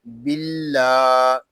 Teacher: اللہ پاک کا لام یہاں باریک پڑھیں گے. اللہ پاک کے لام کو باریک اس لیے پڑھیں گے کہ اللہ پاک کے لام سے پہلے حرف کے نیچے زیر آ رہا ہے